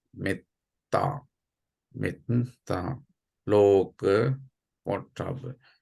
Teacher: The E, O, A, which plays before double consonant, must not repeat, must not pronounce as a long.